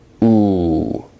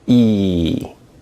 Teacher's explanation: Oo, as you can clearly see and feel, is a rounded vowel, whereas E is not a rounded vowel.